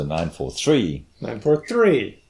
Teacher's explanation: put a big emphasis on the last word in the triple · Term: pitch accent